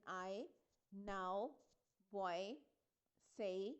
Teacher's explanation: जो first sound होती है वो ज़्यादा प्रोमिनेंट होती है और जो सेकंड साउंड होती है वो थोड़ी सी सॉफ्टर और क्विकर होती है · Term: डिफ्थोंग्स